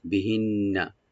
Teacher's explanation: নুন মুসাদ্দাদ এখানে একালে পরিমাণ আমরা গুণা করব, টান হবে না